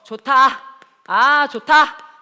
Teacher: 히읗이랑 디귿이 합쳐지니까 티읕 되더라